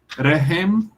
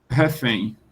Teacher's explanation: o H, que era do árabe, muda-se em F